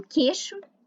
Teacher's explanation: O ditongo EI pode ser pronunciado como E.